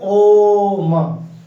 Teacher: दो मात्रा से अधिक समय लग रहा है, इसे हम लोग कहते हैं प्लुत स्वर।